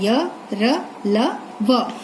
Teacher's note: इसका उच्चारण जीभ, तालु, दंत और ओठों के परस्पर सटाने से होता है, किंतु कहीं भी पूर्ण स्पर्श नहीं होता, इसलिए इसे अंतस्थ कहलाते, इसलिए ये अंतस्थ कहलाते हैं। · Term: अंतस्थ व्यंजन